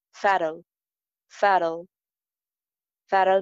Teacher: Fatal mein T jo hai, ye flap T hai. Aur ending L sound ki articulation pe bhi dhyan rakhi.